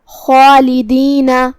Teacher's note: مد الف اپنے پیچھے والے حرف کا حکم لیتا ہے تفخیم میں اور ترقیق میں، تو جو کہ اس سے پہلے حرف الخاء ہے تو ہم خاء کو اور مد الف کو دونوں کو تفخیم سے مطلب بھاری آواز میں ادا کریں گے · کلمت خالدین یہاں حرف الخاء ہے. خاء کو حلق کے اوپر والے حصے سے ادا کرنا ہے. خاء حروف التفخیم میں سے بھی ہے تو ہمیں اسے بھاری آواز میں پڑھنا ہے، جو کہ اس کے بعد مد الف ہے.